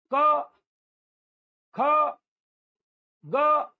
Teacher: कंठ से हवा का एक झोंका आएगा, उसी में का बाहर निकल जाएगा। मतलब इसको हम मुंह खोल के भी बोल सकते हैं, जैसे क ख ग, मतलब आप मुंह खोल के सलंग हवा फेंकते जाएंगे और ये निकलते जाएंगे, तो ये कंठ से निकलते हैं बेटा, इसीलिए इसको बोलते हैं कंठव्य। · ये ग्रुप सीधा हमारे कंठ से बना बनाया निकलता है। बाकी अभी तक आपने जो 20 देखे, इसको हम बनाते हैं मुंह के अंदर, ठीक है, मगर ये हमारे कंठ से बना बनाया, मतलब कंठ से हवा का एक झोंका आएगा, उसी में का बाहर निकल जाएगा।